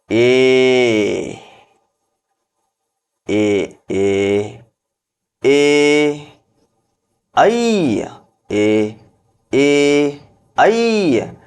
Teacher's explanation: ಕಂಠದಿಂದಲೂ ಹುಟ್ಟುತ್ತೆ ಮತ್ತ ತಾಲುವಿನ ಸಹಾಯ ಸಹಾಯನ್ನು ಪಡೆದುಕೊಳ್ಳುತ್ತೆ ಎ ಐ ನೋಡ್ರಿ ಹಾಗಾಗಿ ಕಂಠತಾಲು ಎರಡು ಸಹಾಯದಿಂದ ಹುಟ್ಟುವುದರಿಂದಾಗಿ ಎಐ ಅನ್ನ ಕಂಠತಾಲವ್ಯ ಅಂತ ಹೇಳಿ ನಾವು ಕರೀತೇವೆ